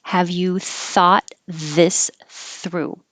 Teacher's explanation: there's a lot of th's here have you thought this through thought and through are voiceless so there's no vibration here